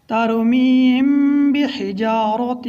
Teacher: میم ساکن کے بعد حرف با آ جائے تو وہاں اخفاء شفوی مع غنہ ہوگا، اس لیے ہم یہاں پر اخفاء شفوی مع غنہ کریں گے کیونکہ با دوسرے کلمے میں ہے۔